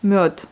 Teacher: Le D est précédé par une voyelle, donc elle devient sourde à la fin.